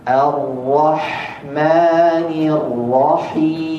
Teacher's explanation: Huruf H, makhrajnya, tempat keluarnya ada di tengah tenggorokan, bukan seperti huruf H yang ada di pangkal tenggorokan. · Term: H tengah tenggorokan